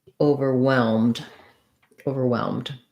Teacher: The stress is on the whelmed part, overwhelmed. So you might want to just say that part of the word first, whelmed, then add your short over.